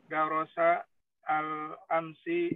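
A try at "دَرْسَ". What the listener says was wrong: Darsa sukun ra-nya.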